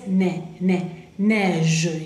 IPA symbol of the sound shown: ɛ